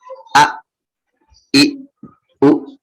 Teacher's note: dia nggak ada punya sifat mantul ataupun udara mengalir. Jadi dia udah beneran berhenti kalau hamzah.